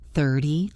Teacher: 30 has the stress on the first syllable.